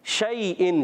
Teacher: شین تفشی والا حرف ہے، صفت تفشی پائی جاتی ہے، منہ میں آواز پھیلتی ہے اور حرف شجریہ سے تعلق رکھتا ہے.